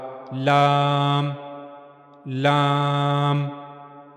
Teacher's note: जबान का किनारा ऊपर के अगले दो दांतों के मसूड़ों से जाकर जब लगेगा तो वहां से लाम अदा होगा। · جب زبان کا کنارہ اوپر کے اگلے دو دانتوں کے مسوڑوں سے جا کر ملے گا اندر کی طرف سے، تو وہاں سے لام ادا ہوگا